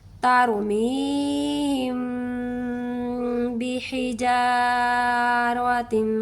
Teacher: بند کرنا ہے، ہم بحجارہ، جب بھی حجارہ پڑھنا ہے نا، ہونٹوں کو بند کرتے ہوئے جب ہم نے ہونٹ کو کھولنے لگنا ہے نا، کھولتے ہوئے ہی ہم نے با کی زیر کو ادا کر دینا ہے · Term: گنہ کاملہ